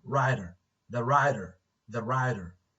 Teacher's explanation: because it is between two vowels so the t is flapped the t is a flap